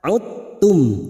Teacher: maka memasukkan huruf mati kepada huruf berikutnya dengan Menghilangkan sifat qalqalanya huruf Dal memiliki sifat pantulan atau Qalqalah sudah hilang karena masuk pada huruf ta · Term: idgham mutajanisain